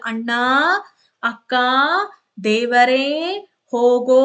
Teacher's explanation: ಇದ್ದೀವಿ ಎರಡು ಮಾತ್ರೆಗಳ ಕಾಲಕ್ಕಿಂತಲೂ ಕೂಡ ಮೂರು ಮಾತ್ರೆಗಳ ಕಾಲದವರೆಗೂ ಕೂಡ ಎಳೆದು ಉಚ್ಚಾರ ಮಾಡ್ತೀವಿ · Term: ಪ್ಲತಸ್ವರ